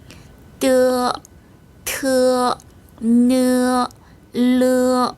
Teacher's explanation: 네, 세 번째 줄의 성모 역시 공통점이 있습니다. 첫 번째 공통점은 혀끝을 윗니 뒤 잇몸에 붙였다가 떼면서 발음해요.